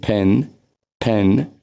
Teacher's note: यो प साउन्ड सुरुमा आउँछ भने यसलाई फ भनिन्छ। यसलाई हामी एस्पिरेसन भन्छौँ। अलिकति फोर्स दिएर साउन्ड प्रोड्युस गर्छौँ।